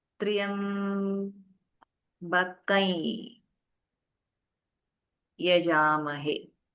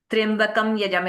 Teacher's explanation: this anuswara will be replaced by a nasalized yakara